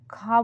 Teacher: हवा सीधी बाहर निकल जाएगी। ख बोलेंगे तो जीभ कहीं टच नहीं होगी। सीधा गले से आवाज निकलेगी।